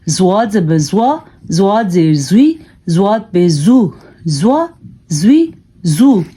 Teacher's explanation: یہ زواد جو ہے اس کو بھی پر کر کے پڑھا جاتا ہے